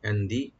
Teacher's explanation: ইনদি মিন এখানে নুন সাকিনে জার হবে গুন্না হবে না ইনদি এখানে নুন সাকিন ইখফা করব আমরা লাইট গুন্না করব